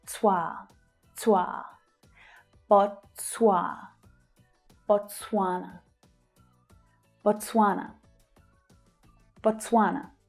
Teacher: So the stress here is on the second syllable, twa.